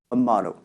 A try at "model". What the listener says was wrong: There, instead of model, it sounds more like motto. O. It sounds like an O sound, or motto, W sound.